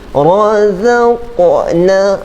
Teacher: Okey, kalau kita baca tadi razaqna, okey, ada lantunan ataupun dipanggil pantulan suara, itu dipanggil qalqalah.